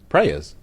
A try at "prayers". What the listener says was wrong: Prayers. You don't really pronounce the Y as heavily as you are, but